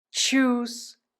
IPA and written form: tʃʏs (Tschüss)